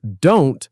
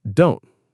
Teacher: Even words like don't might lose the T sound, sounding more like don't.